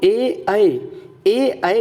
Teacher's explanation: ए ऐ तलुआंग होता है तलवा के माध्यम से आवाज निकलती है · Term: कंठ तालव्य